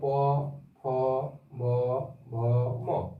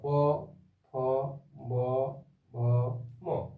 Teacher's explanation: এই বর্ণগুলি উচ্চারণ করার সময় আমাদের ঠোঁট দুটি সংঘর্ষ হচ্ছে, ঠোঁট দুটি জুড়িয়ে যাচ্ছে।